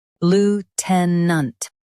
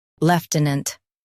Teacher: In US, stress loo. In UK, stress lef.